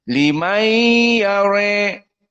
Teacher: Limai karena ada gunnah, dan gunnah makhrajnya dari khaysum.